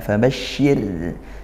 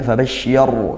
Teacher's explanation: rnya sukun didahului kasrah. Tarqiq kita tipiskan.